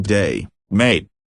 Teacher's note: the a sound in a word like day or the classic Australian greeting day mate can sound closer to the oi sound in boy to an untrained ear.